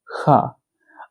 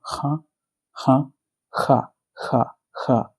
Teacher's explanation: This letter is Ha, Ha. अब ना तो ये पूरी तरह से H साउंड है, ना ही K साउंड है, ये दोनों से मिलके बना है. हा, हा, जैसे आप वर्ड में बोलते हो, हा, हा, हा, हा, हा.